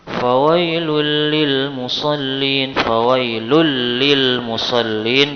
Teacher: karena fawailul li, asalnya fawailun li, ada tanwin atau dhammatain bertemu dengan lam, maka dinamakan idgham bila gunnah, tanpa ada gunnah, tanpa ada suara di hidung. Fawailul lil musallin, idgham bila gunnah itu ada dua hurufnya, ada lam dan ada ra.